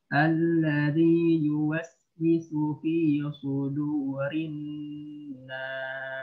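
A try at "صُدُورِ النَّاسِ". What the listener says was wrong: Sudu, ya. Sudurin nas. Hati-hati dal menjadi dha, ya. Dha itu di tepi lidah, ya. Kalau da di ujung. Da. Dha. Du. Du. Sudu.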